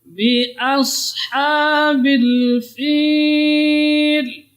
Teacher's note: A ketemu dengan sad di sini. Jadi A-nya tidak boleh tebal dengan asha, tapi asha.